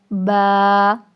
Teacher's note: با دونوں ہونٹوں کی جو اندری والی سائڈ ہے، گیلا گیلا ہونٹ کا حصہ ہے. ٹھیک ہے، گیلے والے حصے سے ادا ہوگا با.